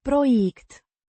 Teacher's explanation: Means project, pronounced Proiect. with the stress on the second syllable.